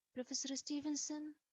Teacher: i used rising intonation i sound uncertain maybe hesitant